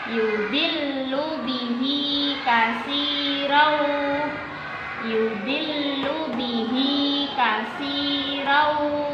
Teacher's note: Kita bilang katsirau gitu ya karena ini ada tanwin bertemu huruf waw. Maka namanya bacaannya idgham bihun.